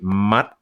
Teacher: my glottis closes right where my tongue hits the palate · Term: glottal stops